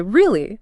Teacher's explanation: if you say really with a rising tone, it's a question or shows surprise. Now, in both cases, the stress is on the first syllable, R-E-A.